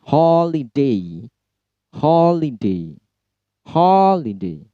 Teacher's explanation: Ho-nya yang di stress. Holiday. Holiday. Holiday. Li dan D-nya rendah tentunya.